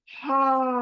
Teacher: हा हलक में कहीं भी रुकेगा नहीं, सीने से निकलकर फौरन हलक से निकलकर बाहर निकलेगा, कहीं टच करना नहीं है इसको। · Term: गोल, हा